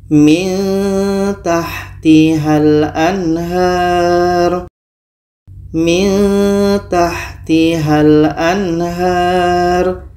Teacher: ini ikhfa aqrab karena makhraj Ta ini dekat dengan huruf nun